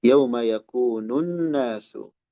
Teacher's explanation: Di sini ada lam, alif lam ya, tapi tidak terbaca, langsung ke nun. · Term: Lam syamsiyah